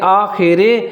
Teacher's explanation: رے جو ہے نا اس کے نیچے زیر ہے تو اس کو موٹا نہیں پڑھیں گے